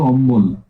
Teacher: দেখো অম্ল ছিল হয়ে গেল অম্বল, মানে কি একেবারে একেবারে মাঝখানে, হ্যাঁ একেবারে মাঝখানে ব ধ্বনির আগম ঘটছে, ব ব্যঞ্জন ধ্বনি, এই জন্য মধ্য ব্যঞ্জনাগম।